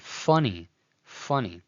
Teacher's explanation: pronounced as a labial dental fricative, as in /f/. You see it in the English word 'funny'